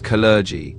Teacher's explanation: So, the emphasis is on the second syllable.